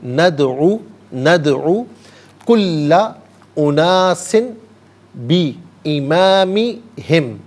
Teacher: یہاں دال ساکن ہے لیکن حرف قلقلہ ہے تو آواز لوٹتی بھی محسوس ہونی چاہیے